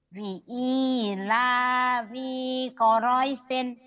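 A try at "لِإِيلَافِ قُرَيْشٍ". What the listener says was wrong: Li'ila fi-nya pendek. Li'ila fi Quraisy, fi Quraisy, fi Quraisy. Li'ila fi Quraisyin, li'ila fi Quraisyin, fi Quraisyin. Fi-nya pendek ya. Fi-nya pendek. Fi Quraisyin, fi Quraisyin.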